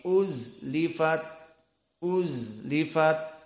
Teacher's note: Maka kalimat uzlifat zai dalam keadaan sukun. Maka di sini sifatnya rokhawah. Dan sifat rokhawah maknanya ada sedikit waktu. Tidak cepat uzlifat, uzlifat.